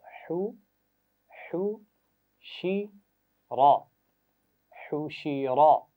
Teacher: درمیان سے ادا کریں گے ہا کی آواز کو